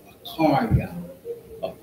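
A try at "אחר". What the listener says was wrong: Try to emphasize that ka in it. Some brother may not understand what you're saying when you say it. They might write it a different way. Just because of the way you're saying it.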